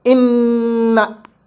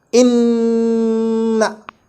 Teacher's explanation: Meaning, we have to do the most complete gunnah, like inna, touching the makhraj of noon. I mean, touching the tooth ridge with the blade of your tongue, and also letting the air escape through your nose for the count of 1 alif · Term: gunnah akmal